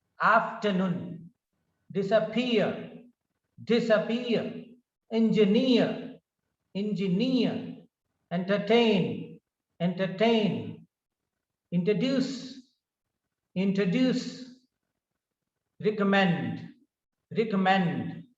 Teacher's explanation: in these words the stress is on the third syllable